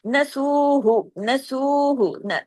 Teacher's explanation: نسوہ، نسوہ، دیکھیں نسو، نون ایک حرکت، سین واو پہ سو دو حرکات، کیونکہ واو مدہ ہے نا. آگے ہاں پیش ہو ایک حرکت.